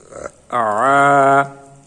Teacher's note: কণ্ঠ বা গলা, হলক হলো কণ্ঠ বা গলা, গলার মধ্যখান থেকে আইনের উচ্চারণ হবে